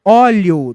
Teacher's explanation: Note que quase você não pronuncia o é o som maior está no ó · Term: ditongo crescente